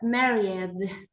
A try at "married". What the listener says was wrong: In this case, imagine that the E is not there. Married.